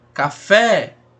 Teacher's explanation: Sílaba tônica é o fé, então oxítona também. Olha como ela se prolonga.